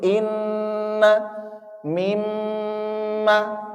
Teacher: nun dan mim tasdid seperti inna mimma itu ada di rongga hidung ini ya ada dengungnya ya · Nah, gunnah sendiri asalnya adalah rongga hidung ini, dan dia kalau kita mengucapkan nun dan mim tasydid seperti inna, mimma, itu ada di rongga hidung ini